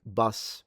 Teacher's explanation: It's mid, so it's kind of a little bit further in the back